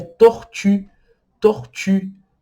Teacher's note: Você vai falar o I, mas vai estar com a boca em formato do U. Então, vai ficar I, I, até você repetir e ficar U, U.